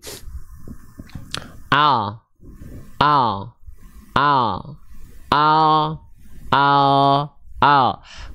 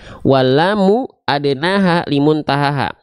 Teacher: samping lidah bagian depan yang kiri menyusur sampai ke ujung lidahnya lalu samping lidah depan bagian yang kanan menyusur sampai ke ujung lidahnya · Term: huruf lam